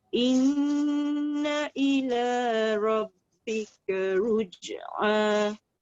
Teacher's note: Mesti kena tekan dekat ra dulu baru pergi dekat ruj.